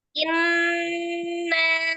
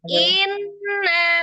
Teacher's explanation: Huruf yang pertama adalah sukun, huruf yang kedua berharokat. Jadi langsung disukunkan, langsung yang gunnah kan nun tasdidnya. Hamzahnya tidak diayun. Jadi inna, bukan inna, bukan in.